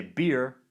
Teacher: accents of new zealand are generally non-rhodic meaning that r is not pronounced at the end of a syllable but is rendered as a vowel